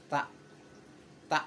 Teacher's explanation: Gigi atas dan bawah Hai pas dikeluarkan bunyi tak itu dia ada sedikit nafas sedikit angin yang keluar dari ujung lidah itu